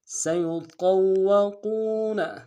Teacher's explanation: سین کی سیٹی باریک ہوگی ، یا کو نون سے ادا کریں گے، قا کو موٹا · قاف کو موٹا ادا کرتے واو کے ساتھ ملانا ہے